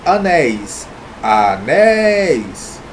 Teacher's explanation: quando eu tenho uma vogal + semivogal e esse som sai aberto da boca · nós temos duas sílabas aqui a mais forte a última sílaba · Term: ditongo aberto